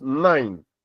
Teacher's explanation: the vowel component is nasalized because it is followed by a nasal consonant N. So whether we are producing or we are pronouncing the words in isolation or we are pronouncing them in rapid speech nalization can still take place.